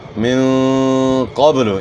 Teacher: نون ساکن کے بعد اخفا کے 15 حروف میں سے قاف ہے، تو آپ نے یہاں غنہ اخفا کے ساتھ کرنا ہے، قاف کو موٹا ادا کرنا ہے، با میں آپ نے قلقلہ کرنا ہے۔